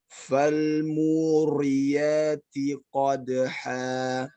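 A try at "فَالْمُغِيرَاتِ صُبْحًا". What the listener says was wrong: Ro-nya terlalu tebal.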